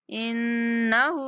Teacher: نون پر غنہ کریں گے، ہا کو 1 سیکنڈ تک لمبا کریں گے۔